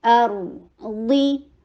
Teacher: ضا کے نیچے کسرہ، ای کی ساؤنڈ اور ہیوی رکھنا ہے